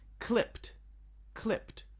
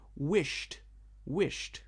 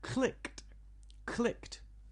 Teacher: Unvoiced. Unvoiced verbs in the past with ed have a t sound.